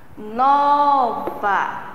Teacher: Então, eu percebo que a sílaba tônica, a sílaba que eu demoro mais a chamar ou a falar é o NO